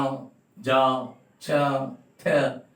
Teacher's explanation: आप देखिए टीथ और आपकी टंग दोनों से मिलकर हो रहे हैं, तो इनको जो कहा जाएगा लिंगुआ डेंटल कॉन्सोनेंट।